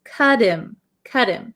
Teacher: when we link these words, this T almost sounds like a D, and this H kind of disappears